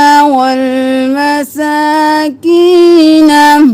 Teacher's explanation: मसा सीन को 1 अलिफ के बराबर, की को 1 अलिफ के बराबर क्योंकि या मद्दा है।